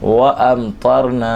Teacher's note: یہاں پر بھی میم ساکن کے بعد تو آ رہا ہے، نہ با ہے نہ میم ہے، اظہار شفوی کا قاعدہ لگے گا، اور جو ہے وہ اس میں ہم غنہ نہیں کریں گے میم ساکن میں. نون الف زبر نا میں الف مدہ، اور اس کو ایک الف کے برابر کھینچ کر پڑھیں گے.